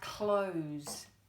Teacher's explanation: close doesn't have a zed in it even though it sounds like it does we're using the S to make that Zed sound s often